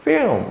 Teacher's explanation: F랑 I랑 L 사이에는요. I라는 모음이 있지만 L과 M 사이에는 모음이 없어요. 그래서 film 뭐 이렇게 발음하잖아요.